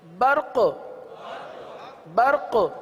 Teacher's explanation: قاف کو باقی رکھنا اسی صورت میں ہوگا کہ آپ قلقلہ ادا کریں، آپ قلقلہ ادا کریں، قلقلہ ادا کریں گے قاف باقی رہے گا.